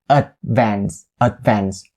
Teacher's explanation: i have a little bit of a sound in my throat in order to make that stop d sound